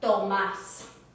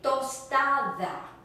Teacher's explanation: you don't have to have that puff of air when you say t. In English you say t, in Spanish it's drier. Tomás, for instance, Thomas.